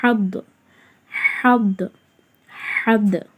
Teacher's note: தடிமனாக ஓதலாமே தவிர கல்கலா செய்யக்கூடாது. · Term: ஹுர்ஃபே முஸ்தலியா